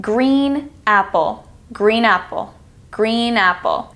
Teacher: The N blends with the A to almost make it sound like one word